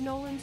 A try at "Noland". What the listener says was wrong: Noland with a D.